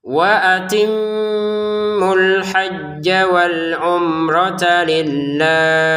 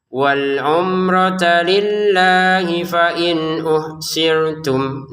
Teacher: Lillahnya kita baca enam harakat karena berhenti.